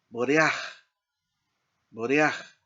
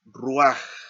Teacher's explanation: Aquí la encontramos en esta otra palabra, notea, y acá abajito, ruaj. Entonces, esta pataj furtiva tiene esa característica que se pronuncia, podríamos decir, antes de la consonante, en este caso de la het. Y no se considera como vocal plena ni se toma en cuenta al separar las sílabas.